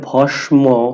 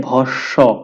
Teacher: ম ফলা আছে কিন্তু এটা ভস্ম হবে না এটা হবে ভস্ব দন্তস টা দুইবার উচ্চারিত হবে